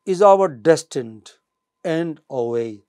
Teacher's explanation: So, end and way are stressed syllables but not or.